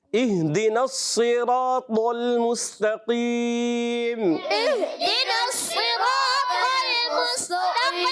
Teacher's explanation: صاد کو موٹا رکھنا ہے، را کو بھی اور طا کو اور زیادہ موٹا کرنا ہے